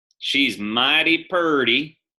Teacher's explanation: And we have the long R vowel in Southern English.